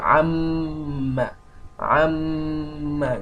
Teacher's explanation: it is a sound coming out from the nose without having anything to do with the throats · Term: nasalization